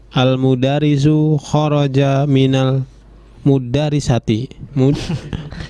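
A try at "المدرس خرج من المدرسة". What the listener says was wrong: Madrasah itu bisa juga kita baca mudarisah. Tapi nanti kalau kita baca mudarisah maknanya membingungkan ini ya.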